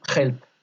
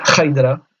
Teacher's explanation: en début de mot, on prononcera bien le H comme un R